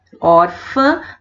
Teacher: Ela é paroxítona porque ela recebe a sílaba tônica na penúltima